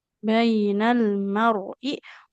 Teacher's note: Ro sukun apabila huruf sebelumnya fathah jadi tebal.